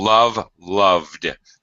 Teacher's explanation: because V is a voiced sound, where we just follow it immediately with the D sound.